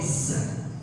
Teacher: karakteristik huruf zai itu kalau kita itu mengeluarkan suara seperti sautun nahl. Ya seperti suara tawa.